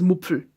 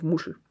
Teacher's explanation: he cannot pronounce the SCH or SH sound, so he has a PF sound instead of it. So he says Mupfel instead of Muschel.